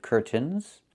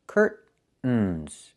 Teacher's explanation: It's curtains with a real T, curtains. Or I can use a stop T and say stop the air, put the tongue up, curtains, and go directly to the N, curtains. So curtains or curtains.